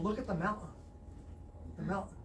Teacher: the letter T is vanishing